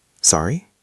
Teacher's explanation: In this context, the tone goes up slightly at the end. It's a question tone.